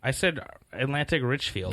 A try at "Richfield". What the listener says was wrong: You said like Richford. Or Richard.